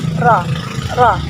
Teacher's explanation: Terasa sekali ujung lidahnya nempel ke gusi atas. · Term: huruf ro